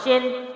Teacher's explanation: اب شین شن، اب اس کو اس طرح نہیں پڑھنا، واضح کلیئر کیا ہوگا؟ شین دو زیر شن، فوراً شن، نون بھی واضح ہے، شین کا جو ساؤنڈ ہے وہ بھی واضح ہے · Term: تنوین